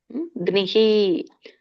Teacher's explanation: ದೋ ಗ್ನಿಹಿ, ಗಕ್ಕೆ ನವತ್ತಿದೆ ಮತ್ತೆ ಗಕ್ಕೆ ಈ ಸ್ವರ ಕೂಡಿದೆ, ಹಾಗಾಗಿ ಗ್ನಿಹಿ. ವಿಸರ್ಗ ಕೂಡ ಹಿ ಅಂತ ಬರುತ್ತೆ. ಗ್ನಿಹಿ.